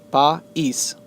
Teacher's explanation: The stress is sobre la I.